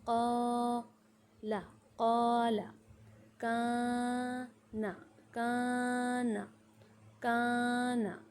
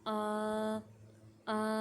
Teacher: اب یاد رکھیں کہ مطلب اوپر کی طرف اٹھانا ہے، لمبی آواز نکالنی ہے آپ کو، آ آ، اوپر کی طرف آپ کو آواز اٹھانی ہے الف مدہ میں۔